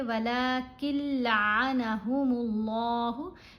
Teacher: یہاں نون خاموش ہے، کاف کو ہم نے مشدد لام سے ملانا ہے. لیکن یرملون حروف میں دو حروف ایسے ہیں، لام اور را، جن کے اوپر غنہ نہیں کیا جائے گا، تو یہاں ہم نے غنہ نہیں کرنا.